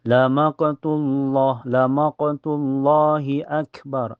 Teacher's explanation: Ini di lafaz Allah, lafaz jalalah dibaca tebal ya. Karena sebelumnya berharakat domah atau di atas.